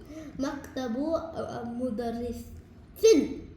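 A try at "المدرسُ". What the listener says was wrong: नहीं मुदर्रिसुन नहीं है, अल मुदर्रिसु है। तो अल आएगा तो सी आएगा।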